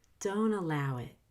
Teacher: NT before a vowel has a drop T.